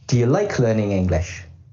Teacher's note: In this sentence, the stressed words are like, learning, and English, and there are no schwa sounds in those words. The unstressed words are do and you, and they will often be pronounced as schwas.